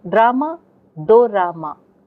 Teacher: When Japanese people hear drama, they report hearing the do ra ma. They insert do. The da and ra cannot come together in Japanese.